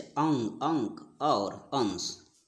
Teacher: इसमें भिन्न भिन्न व्यंजन के साथ मिलकर इसका निर्माण हुआ है। अनुस्वार, अनुस्वार के उच्चारण में नाक से अधिक सांस निकलती है।